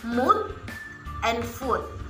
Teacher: lifting of the tongue to a high position, raising the back on the tongue in the direction of the velum, and forming rounded lips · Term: high back rounded vowel